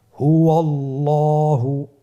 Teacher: আল্লাহ শব্দের আগেই, মানে আল্লাহ শব্দের দ্বিতীয় লামের আগেই আপনার জবর এসেছে, তাহলে আল্লাহ শব্দের দ্বিতীয় লামটিকে পোর করে পড়তে হবে